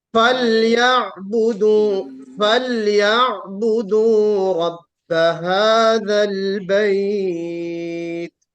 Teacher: فليعبدوا رب فليعبدوا هذا رب البيت هذا البيت हाँ, फा में भी देखिए हमस होगा, बिल्कुल फा जाहिर होना चाहिए, फा, फा शफतैन का, दोनों होठों का मिलना जरूरी है।